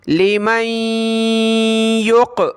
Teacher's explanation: नून साकिन के बाद वाले वर्ड पे तशदीद हो तो वहाँ हमने नाक में आवाज़ पैदा करनी है और उस नून को हमने नहीं पढ़ना।